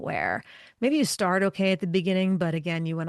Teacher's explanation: you get this crackly, froggy kind of sound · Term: vocal fry